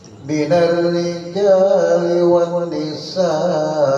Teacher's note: juga ada mad wajib mutasil, panjangnya 2 alif 6 harakat